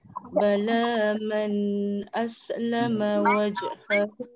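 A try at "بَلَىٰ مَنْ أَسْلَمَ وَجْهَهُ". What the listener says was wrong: Man tak dengung. Bala man aslama.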